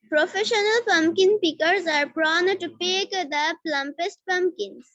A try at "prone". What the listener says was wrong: হ্যাঁ, প্রনি না, it's প্রন, okay, not প্রনি।